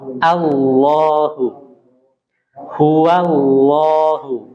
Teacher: Lafdzul jalalah itu yang tebalnya itu di lamnya. Ya, yang tebal itu di lam dan dia ada mat di lamnya itu, 2 harokat.